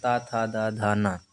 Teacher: ता वर्ग के जितने हैं वो उच्चारित होते हैं दंत से